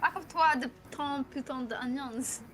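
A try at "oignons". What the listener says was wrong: You don't pronounce the S, but you're good.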